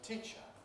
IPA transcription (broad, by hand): ˈtiːʧə